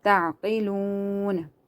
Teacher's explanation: this is also waw madda, because the waw is silent, and before that there is madda, so you have to stretch it according to one alif.